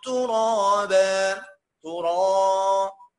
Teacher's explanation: الالف فخمة. طب ليه؟ عشان قبلها الراء